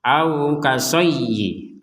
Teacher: Di sini ada ya yang bertanda tasydid, kita dibacanya dengan tekanan ya, karena ya itu artinya menekan. Ini ya-nya satu ada tasydid, dibaca seakan-akan ya-nya itu adalah dua. Au kasayyi, itu penekanan, harus ditekan.